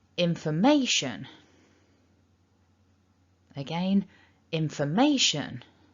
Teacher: we need to stress may a bit more that means that fu and shun the other two syllables are weaker · f and shun, the other 2 syllables, are weaker. And a little clue to the fact that they're weak is that they both contain a schwa sound. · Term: 2 stresses